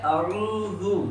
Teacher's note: زال کو بھی بغیر کھینچے پڑھیں گے، باریک پڑھیں گے اور زا کی بو اس میں نہیں آنے دیں گے